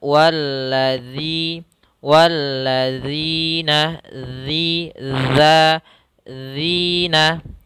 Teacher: posisi huruf Dal yaitu ujung lidah kita menempel dengan Gigi saya di atas sehingga suaranya lebih tipis dan juga terdengar berbeda daripada huruf Za tapi dia walladzi walladzina